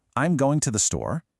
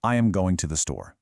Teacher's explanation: The American music goes up at the end and the British music goes down. · British speakers generally use a falling intonation. The tone drops down at the end of a statement. Listen to my voice go down this time. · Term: rising intonation